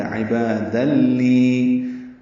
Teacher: تنوین کے بعد لام آنے کی وجہ سے ادغام کامل ہے. عبادا لی، اور اس میں دیکھیں نون کی آواز ختم ہو گئی، یہ دال لام سے مل گیا، یہ ادغام کامل ہے، مکمل تنوین لام سے ملا دی گئی.